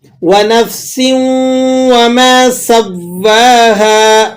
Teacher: سین ہے باریک سیٹی کے ساتھ